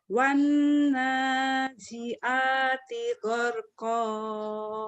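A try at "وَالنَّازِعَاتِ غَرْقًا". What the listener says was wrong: Bagus, tinggal ainnya aja, Bu. Z-nya udah berubah. Biasanya Z-nya ke ya, wanaya. Wanazi'a, tinggal ainnya di sini.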